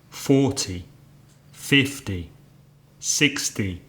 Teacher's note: the numbers in their tens forty fifty sixty seventy have the stress on the first syllable